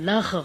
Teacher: غین جیسے گلا صاف کرتے ہیں ایسے ساؤنڈ ہوتی ہے